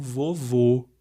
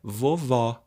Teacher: o som forte a tônica no último vô e é um som fechado